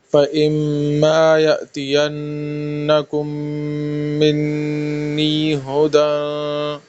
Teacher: یأتین نون میں غنہ ہے، کم پھر میم میں غنہ ہے، منی نون میں پھر غنہ ہے